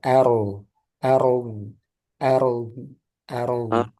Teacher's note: A sudah benar tipis, tapi roknya tebal.